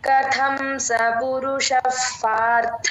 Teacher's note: థ కథం అలాగే పార్థ థ మహాప్రాణం